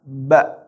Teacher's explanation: Ba berbunyi karena bertemunya bibir atas dan bibir bawah, dibaca ba. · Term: makhraj huruf ba, huruf ba